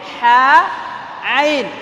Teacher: হা, আইন একই জায়গা থেকে বের হয়, কণ্ঠনালীর মধ্যখান থেকে।